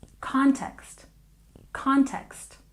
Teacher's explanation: And context, we stress the first syllable.